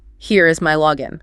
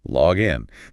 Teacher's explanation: But when we use the noun, the single word referring to the credentials, the stress falls heavily on the first syllable.